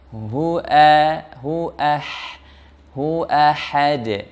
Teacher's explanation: Dia tipis, kemudian dia lembut dan dia hamasnya. Nah, hamasnya sangat terasa. Mengalirnya nafas, mengalirnya suara.